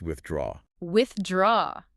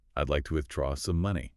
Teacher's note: When you hit that stress on the second syllable, it just melts into the sentence.